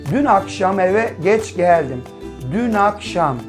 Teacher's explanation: Dün akşam Sanki akşam kelimesi nakşam der gibi oluyor değil mi dün kelimesindeki sessizi bir sonraki sesli harfle birleşikmiş gibi okunuyor İşte bu olaylar Biz ne diyoruz ulama olayı